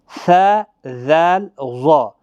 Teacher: زبان کی نوک اور ثنائے علیہ کے کنارے، یعنی تیز دھار جو ہوتی ہے دانتوں کی، وہاں سے ادا ہوتے ہیں۔ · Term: حروف لثویہ